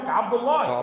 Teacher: رقق اللام، نعم، وفخم اللام من اسم الله، نعم، عن فتح او ضم كعبد الله